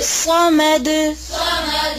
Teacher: صاد کو موٹا کریں